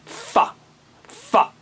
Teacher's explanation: نیچے کے ہونٹ کو اوپر کے دانتوں سے ملائیں. اوکے، اوپر کے دانتوں سے لگائیں، پھر کہیں فا.